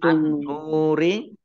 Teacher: An-nuri alif lamnya alif lam syamsiah karena tidak dibaca langsung masuk ke huruf berikutnya yaitu nun, ditandai nunnya ada tasdidnya. Nun tasdid dibaca gunnah atau mendengung, tahan 2 harokat